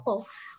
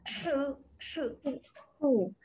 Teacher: Dia mesti datang dari tekak tau.